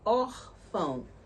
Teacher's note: Porque a gente sabe que paroxítona, né, é a penúltima sílaba que é a mais forte